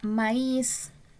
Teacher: La palabra maíz termina en Z, pero se tilda porque se tiene que tildar porque está formando un hiato, y al dividir ese hiato, ¿verdad? La mayor concentración de fuerza queda en la última sílaba. Entonces, maíz es una palabra aguda que se tilda, aunque termine en Z.